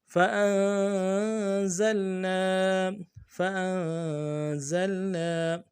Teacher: لهم، قیل لهم فأنزلنا، فا کو نرم سے ادا کرنا ہے، حمزہ کو نون کے ساتھ ملانا ہے، نون ساکن میں غنہ کریں گے